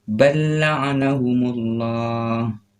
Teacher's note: Cara membacanya dari ba langsung masuk ke lam.